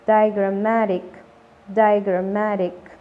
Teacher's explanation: Nótese el sonido largo de la vocal I al comienzo